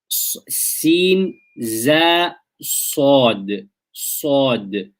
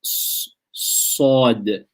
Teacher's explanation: safir is an extra sound which comes from between the lips, which accompanies sad, za, and sin when they are pronounced. Okay, so it's an extra sound which accompanies these letters when they are pronounced, which comes between the lips. · For our intents and purposes, we can understand this as a whistling sound. So it's a whistle sound which is created by the positioning of the tip of the tongue and the teeth, creating a narrow gap for the air to flow.